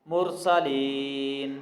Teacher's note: یائے مدہ ہے، یا ساکن ہے، اس سے پہلے زیر ہے اس لیے اس کو لمبا کر کے پڑھیں گے۔ مرسلین، اور نون پہ ہم وقف کر رہے ہیں، آیت ختم ہو رہی ہے اس لیے یہاں پہ ہم نون ساکن کر رہے ہیں۔